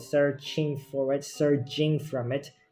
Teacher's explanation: So in the first sentence I wrote searching for it, surging from it. The S and the affricates ch and j is intentionally kept